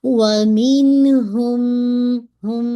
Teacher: पूरा आपने होल्ड करना है फॉर टू काउंट और आपका ये जो गुन्ना होगा ये आपका मोस्ट कंप्लीट गुन्ना अकमल गुन्ना होगा